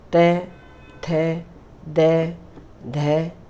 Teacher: ठीक है, आप ये देखेंगे ना, इन वर्णों को जब आप बोलेंगे तो आपको खुद ही ये महसूस होगा कि ये जब हमारे इन वर्णों को बोलते हैं तो हमारी जीभ दांतों को स्पर्श कर रही है